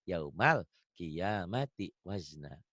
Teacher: Ah, malnya juga jangan ada e-nya ya.